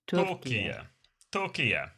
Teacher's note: Turkey has the stress on the first syllable.